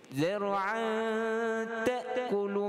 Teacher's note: kalimah zar'an itu di ikhfa dengan ikhfa abadan abada, selamanya mesti dengung. Dia tak pernah tak dengung.